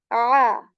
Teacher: Ain letter comes from the portion of throat which is the middle one.